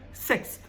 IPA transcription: sɪksθ